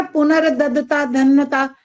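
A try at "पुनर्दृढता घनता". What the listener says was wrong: ये ध नहीं है। पहली बात ध बोलना बंद करो, घ होता है ये। पुनर्ददता घनता, घनता नहीं बोलना, घ बोलोगे तो घ तो पूरा हो गया। घन, घन एक होता है घन, एक होता है घन। ये है पुनर्ददता घनता।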